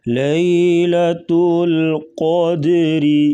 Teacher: را کے نیچے زیر، را کو باریک پڑھیں گے